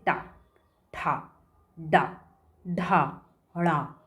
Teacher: ठीक है, इसमें क्या होता है, जब जीभ मुड़ जाती है, ठीक है, जब हम जीभ को मोड़ते हैं तब इसका उच्चारण होता है। इसमें जीभ को मोड़ना पड़ता है। मुड़ करके जब वो टर्न हो जाती है तो तालु में जाती है, तब इसका उच्चारण होता है। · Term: मूर्धन्य वर्ण